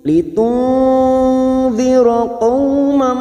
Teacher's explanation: Nun sukun bertemu dal, ikhfa hakiki. Ini juga disebut dengan ikhfa ausat. Nun sukun kita samarkan 3 harokat.